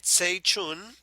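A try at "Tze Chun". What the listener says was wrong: By the way, his first name is pronounced Z. I know, but he says it's pronounced Z. No one knew until he said it.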